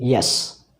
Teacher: here the active articulator is the front of the tongue and the passive articulator is the hard palate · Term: palatal consonants